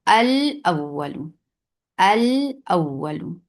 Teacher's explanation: اس لام کو واضح کر کے پڑھیں گے، یعنی اظہار کر کے پڑھیں گے۔ یہ ادغام نہیں ہو رہا بلکہ اس اپنی آواز برقرار رکھتا ہے، والاول۔